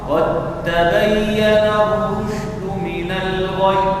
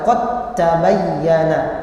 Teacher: ketika dal sukun bertemu dengan huruf ta. Nah, ini dibaca idgham, dimasukkan. Sebagaimana firman Allah Subhanahu wa taala, qad tabayyana, maka dibaca langsung ke idgham ke ta.